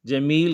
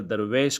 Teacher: اسی طرح جمیل کے اندر، یعنی یہ مدح کی مثالیں، جمیل کے اندر یا معروف مگر درویش کے اندر غیر معروف ہوتی ہے، یعنی اس میں مجہول ہوتی ہے